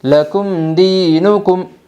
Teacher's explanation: میم ساکن کے بعد دال آئی ہے اس لیے میم ساکن کو ظاہر کر کے پڑھے گے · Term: اظہار شفوی